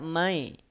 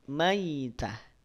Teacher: Condong pada bunyi vokal i. Dengan catatan, awas hati-hati jangan ditekan. Artinya baca dengan lunak. Karena di sini harful lin.